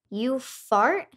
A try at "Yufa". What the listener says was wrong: No, no, the A is not pronounced like A or R. It's fut.